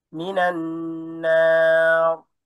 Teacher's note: মিনান নার র মোটা করেন